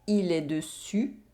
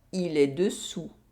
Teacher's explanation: Here, we have a difference in oral vowel sound. We have the [y] sound in the first sentence, and the [u] sound in the second sentence.